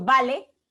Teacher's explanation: Cuando yo pronuncio vale, ese B se pronuncia de forma oclusiva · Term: sonido oclusivo